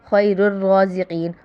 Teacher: رو کو پر پڑھیں گے کیونکہ اس پہ کھڑا زبر ہے، کھڑا زبر بھی زبر کی طرح ہے، اس لیے ہم جو ہم حرکت میں اپلائی کرتے ہیں جیسے زبر زیر پیش میں اسی طرح ہم کریں گے۔